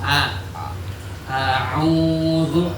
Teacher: Hamzah Keluarnya di mana? Tenggorokan. Tenggorokan paling bawah bawah.